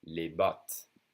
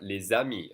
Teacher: I'm connecting the S sound that's usually silent to the next vowel with a Z sound.